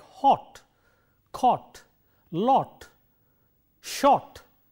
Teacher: we have the vowel O, which is a rounded vowel